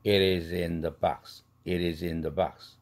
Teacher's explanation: It is in the 할 때 트 플랩 되면서 링킹 되죠. it이 is 할 때도 z도 링킹 되죠.